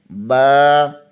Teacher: بند ہونٹوں کے گیلے حصے سے ادا ہوتا ہے